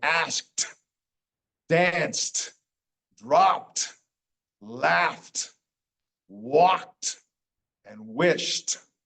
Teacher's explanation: the first Ed ending sounds like a t